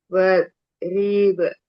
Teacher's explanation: Wadrib ba sukun qalqalah sugro dipantul ringan ke huruf a karena huruf ba merupakan huruf tipis